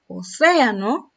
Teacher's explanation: ¿Dónde está la sílaba con acento? En la antepenúltima, ¿verdad?